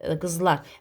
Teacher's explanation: qızlar deyirəmsə, lar vurğu qəbul edəcək